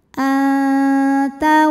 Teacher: Kemudian ada hukum ikhfa aqrab karena nun sukun menghadapi huruf ta, maka nunnya dibunyikan samar-samar siap-siap menuju ta disertai dengung. Dengungnya sedikit ya karena ta makhrajnya masih dekat dengan nun.